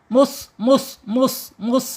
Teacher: shofir itu Ada suara desisan ketika dia sukun. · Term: sofir